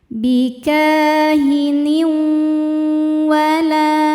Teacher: Bikahin berikutnya ada hukum idgham bighunah karena ada tanwin kasrah menghadapi huruf wau. Cara bacanya tanwin dileburkan ke wau disertai dengung.